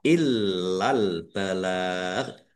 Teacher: Lamnya dibaca double, ada tasdidnya, ditekan dan ditahan.